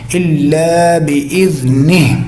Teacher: الا کے ساتھ الف ہے، الف زبر کے ساتھ ہے لمبا ہے